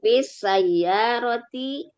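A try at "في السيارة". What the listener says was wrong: Fis sayyarati fis say. Ini kalau tidak tasdidnya salah ya. Fis sayyarati.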